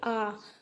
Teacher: तो देखो आपका पूरा मुंह खुलेगा, तो आप ऐसे याद रख सकते हो कि आ तो मतलब विव्रत स्वर